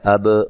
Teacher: با کو ہلا کے پڑھنا ہے، با حروف قلقلہ میں سے ہے